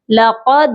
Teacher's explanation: قاف کو موٹا پڑھیں گے، اور دال جو ہے حروف قلقلہ ہے، اس پر قلقلہ کریں گے